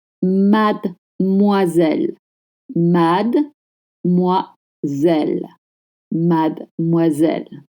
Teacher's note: Please don't pronounce the de.